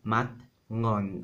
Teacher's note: we have mat ngon, a stop consonant and a velar nasal